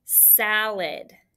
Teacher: The first syllable, easy. The second syllable is where we have our schwa, but it's A-D for that id sound.